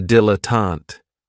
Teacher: this word has three syllables and there's kind of like a stress on that first and last syllable